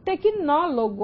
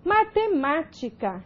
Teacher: 3 últimas sílabas, a tônica é a antepenúltima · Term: proparoxítono